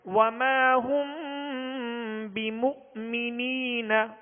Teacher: اخفاء شفوی، ایک الف کی مقدار میں غنہ کریں گے، آگے حمزہ ساکن ہے بیمو، تو اس کا جھٹکا جو ہے واضح کریں گے